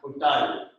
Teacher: It's a retroflex sound that means your tongue up to the palate.